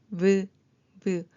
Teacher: 윗니를 아랫입술에 살짝 대고 바람과 목소리 함께 내는 소리입니다